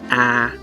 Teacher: So this is a front open vowel, or you can call it a wide A. It's similar to the A in cat in English.